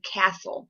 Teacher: We're talking about the silent T sound, as in castle. If you listen to the word castle, you do not hear the T sound. So the T is silent.